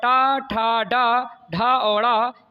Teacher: ज जो है मूर्धन्य नहीं है और ट ठ ड ढ और ड़ ये आपके मूर्धन्य व्यंजन है